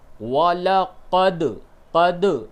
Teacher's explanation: جیسے کہ یہاں پہ دیکھیے دال کے اوپر جزم ہے، تو اب اس کو یوں پڑھا جائے گا وَلَقَدْ، قد، دال میں ٹکراؤ پیدا کریں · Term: قلقلہ